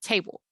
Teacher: it's cut off table right it's cut at the end table so tay is long it's a stressed syllable bowl is short it is an unstressed syllable